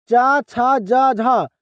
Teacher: च, छ, ज, झ यह सारे क्या से बोले जाते हैं? तालु से।